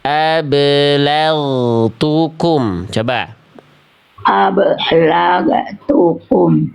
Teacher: Perhatikan gin sukunnya. Bunyinya enggak ada bunyi e di ujung pelafalan gin.